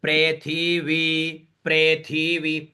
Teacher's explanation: तो प्र में बीच में आ जाएंगे थी में हमारा स्वर नीचे जाएगा क्यों क्योंकि इसके अगला स्वर व पर बीच का स्वर है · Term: स्वरित स्वर